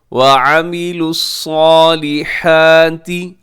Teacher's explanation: عین کو آپ نے حلق سے ادا کرنا ہے